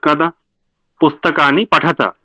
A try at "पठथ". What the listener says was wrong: पठथ. পঠতহ শুনলাম. ও আসলে একটু গন্ডগোল হয়ে যায় এখানে.